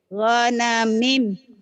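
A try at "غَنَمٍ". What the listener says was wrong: Gonamin. Jangan gonamim. Gonamin.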